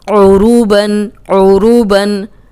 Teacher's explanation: اب عین کو موٹا نہیں کرنا، را کو موٹا کرنا ہے، کیونکہ را پہ پیش آ گئی ہے، اور عین کو حلق سے نکالنا ہے